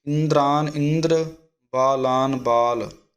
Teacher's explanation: ਇੰਦਰ ਵੀ ਲਮਕਾ ਕੇ ਨਹੀਂ ਬੋਲਣਾ ਕਿਉਂਕਿ ਅੱਧਾ ਰਾਰਾ ਪੈਰ ਵਿੱਚ ਹੋਣ ਕਰਕੇ ਛੇਤੀ ਪਾਠ ਬੋਲਣਾ